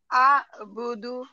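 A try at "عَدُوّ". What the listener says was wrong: হ্যাঁ কিন্তু আতে আপনি বেশিক্ষণ টান দিবেন না জাস্ট আ থেকে আইনে যাবেন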